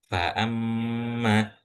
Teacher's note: Kenapa kok rongga hidung? Karena kita enggak bisa mengucapkan huruf mim tanpa rongga hidung itu terbuka atau mengalir udara dari sana.